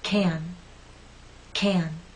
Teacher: The stressed can makes you pull your lips out and your tongue is rather flat and pushed forward.